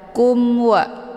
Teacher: dengan izhar syafawi cara bacanya mimnya dibunyikan secara jelas atau Bui m-nya cukup ditekan saja tidak perlu ditahan kumwa hukum bacaan izhar syafawi jelas Tiada berdengungu